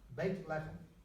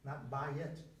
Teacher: you had a reduction to one syllable, bait lechem, house of bread, bait lechem, not bayit, because this is construct, you gotta express the of relationship.